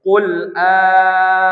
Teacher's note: Jadi diibdalkan, maka dibacalah alifnya yang panjang. Jangan lamnya dipanjangkan.